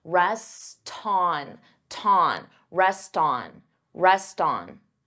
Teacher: So here you hear that T because I'm linking the two words together and I'm transferring the T sound onto the vowel.